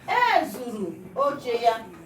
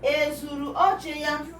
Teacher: It is a high tone because we are making a statement and not asking question. When we are making a statement, the first letter that will bear the tomakin, it will be in high tone.